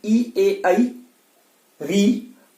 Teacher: जब आप इनको बोलते हैं ई ए आई री, तो आपकी जिह्वा का, पूरी जिह्वा, जो पूरी जिह्वा है, पूरी जिह्वा का अगला वाला हिस्सा ऊपर को उठता है, अगला वाला हिस्सा ऊपर को उठता है। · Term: अग्र स्वर